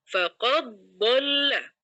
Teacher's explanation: Cara membacanya suara dalnya itu dimasukkan ke dalam suara dod. Jadi faq langsung masuk ke makhrajnya d faqaddolla seperti itu. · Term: idgham